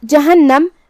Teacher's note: نون پہ تشدید ہے تو ہم 2 حرف کے برابر نون کو پڑھیں گے